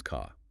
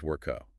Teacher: The consonant essentially evaporates into a prolonged vowel sound. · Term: non-rhotic R